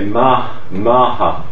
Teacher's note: we have a complete loss of the unvoiced th in a number of dialects in the Baz and Jilu area. So in Baz, some Baz villages, the word for Martha village, they would say Maha.